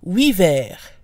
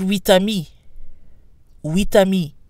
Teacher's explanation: the final T is pronounced when 8 is alone or followed by a vowel. It's silent when followed by a consonant. · So we have huit, huit, but huit vers. Again, the T is silent when followed by a consonant.